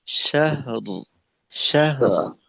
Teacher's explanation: র যেন বাদ না যায় আর শাহার যেন হয়ে না যায়